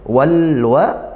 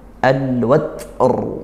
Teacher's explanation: Al bertemu huruf waw, huruf qamariyah. Lam ta'rifnya tetap dibaca sukun, dibaca jelas. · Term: izhar qamariyah